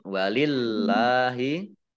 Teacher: Allahnya dibaca tipis karena harokat di depannya kasroh. Kemudian lam fathah berdiri mat tabi'i.